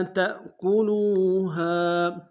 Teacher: تا کو حمزہ کے سامنے لانا ہے، جھٹکا دیں گے